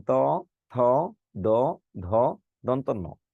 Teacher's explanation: যে ধ্বনি উচ্চারণে আপনার জিহ্বা দাঁতকে স্পর্শ করে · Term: দন্তবর্ণ